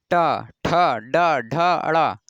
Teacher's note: टा वर्ग का उच्चारण स्थान जब इसमें बोलते हैं, टा वर्ग जो होता है इसको जब बोलेंगे तो मूर्धा मतलब जीभ जो है ऊपर तालु से सट करके झटके से बाहर निकलती है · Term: मूर्धन्य